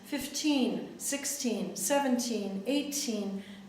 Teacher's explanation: the stress pattern for the teens is unstressed for the first syllable